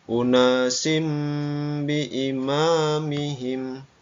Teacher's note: suara tanwinnya berubah menjadi suara mim